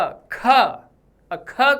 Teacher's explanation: हवा तेजी से बाहर आ रही है और आवाज धीमी है, लेकिन हवा तेज है, तो अल्प प्राण। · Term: महाप्राण